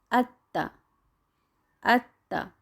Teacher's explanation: با کی طرح آت نہیں کر رہے کیونکہ تا حروف قلقلہ کا حصہ نہیں ہے